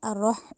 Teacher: ایک تو یہ کہ الرح، دوسرا جو ہے وہ ہا جو ہے وہ حلق سے ادا کیا جائے گا، اس کو ہم نے ہا نہیں کہنا، یعنی ہاتھی والی ہا نہیں بنانی۔ جو ہا ہے اس کو ہا وسط حلق سے، یعنی حلق کے درمیان والے حصے سے آپ نے نکالنا ہے، الرح اس طرح کر کے، الرح نہیں کہنا۔